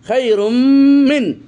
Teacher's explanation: তানবিনের পর মিম এসেছে ইদগাম হয়েছে ইদগাম তাম পরিপূর্ণ ইদগাম গুন্না সহকারে